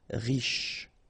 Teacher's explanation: Final not really pronounced, so sh is the last sound